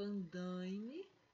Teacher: mesmo tendo o i, eu continuo falando andaime, nasalizando o a